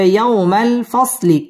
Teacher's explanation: ইয়াও জবরের বাম পাশে জজম ওয়ালা ওয়াও লিনের হরফ তাড়াতাড়ি পড়তে হবে